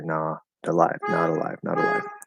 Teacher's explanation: And when I was analyzing the sentence, I talked about how the T in not will turn into a flap D and connect over